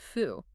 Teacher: Instead of a hard pressurized burst of air, you simply allow the air to flow continuously through slightly parted lips. The mechanical tension in the face completely relaxes. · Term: bilabial fricative